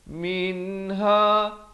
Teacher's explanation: min izhar halqi, jangan panjang.